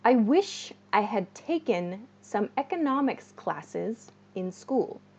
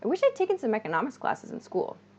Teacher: i wish i had becomes reduced we reduced this to i wish i'd